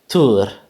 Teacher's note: with that alveolar tap on the end of the first syllable in the Turkish pronunciation